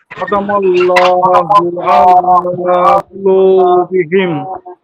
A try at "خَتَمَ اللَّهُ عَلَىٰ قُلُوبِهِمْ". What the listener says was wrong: আলা না, আয়াটান না, টানতে হবে লামে। আলা আলা কুলুবিহিম খতামাল্লাহু আলা কুলুবিহিম